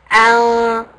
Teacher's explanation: So ghunna, the reason what ghunna is when you actually pronounce the noon sukoon with your nose